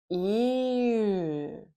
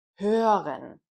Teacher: try rounding the lips while saying an e sound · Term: ö sound